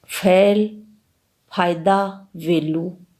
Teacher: यह दोनों ही व्यंजन दंतोष्ठे हैं।